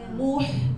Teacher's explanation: Tapi yang muh tu huruf sukun memang tak boleh muncung.